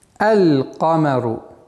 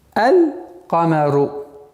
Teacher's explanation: Лунные буквы, в отличие от солнечных, артикль произносится, то есть буква лям в артикле произносится.